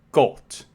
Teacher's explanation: he describes the short O as an open O, as in German, Gott. So sort of oh.